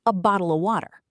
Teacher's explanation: the of becomes just uh a tiny little sound, almost nothing. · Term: unstressed words